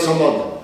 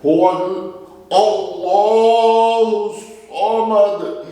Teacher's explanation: اگر باریک کر دیں گے تو سین سے بن جائے گا سمد، معنی بدل سکتا ہے، سواد سے رکھنا ہے